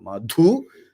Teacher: So madhu is the dhu mahaprana.